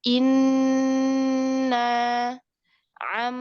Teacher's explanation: ini Ini diwajibkan untuk gunah yang panjang contohnya Inna am eh jadi tempo masuk ke hidungnya itu lebih lama Paling lama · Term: Akmal